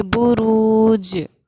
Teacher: حروف مدہ، حرکت، جزم سکون، حرکت، حروف مدہ، حرکت، اور کیونکہ اس حرکت پر ہم وقف کریں گے جیم پر، تو یہاں پر ہمارا قلقلے کا قاعدہ جیم پر جاری ہوگا۔ ہم اس کو پڑھیں گے بروج، آواز ہماری لوٹے گی